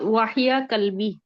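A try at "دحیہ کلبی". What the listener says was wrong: دال کے ساتھ ہے،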